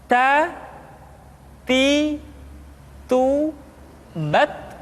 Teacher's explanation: Berikutnya huruf Ta. Keluar dengan menyentuhkan ujung lidah kita dengan gusi-gusi gigi seri bagian atas.